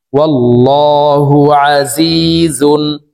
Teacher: এই তানউইন ওয়ালা জাটি গুন্না ছাড়া স্পষ্ট করিয়া পড়ব